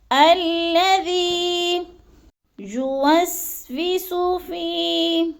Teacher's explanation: یا مدہ کو ایک الف دو حرکات کے برابر ہم نے لمبا کر کے پڑھنا ہے